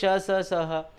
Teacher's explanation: इनको आप जब उच्चारण करेंगे तो ऊष्म, गर्म सी ऊष्मा मुंह से बाहर निकलती है, इसलिए इनका नाम है ऊष्म व्यंजन